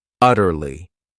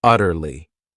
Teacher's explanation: This word has three syllables and the stress is on that first syllable.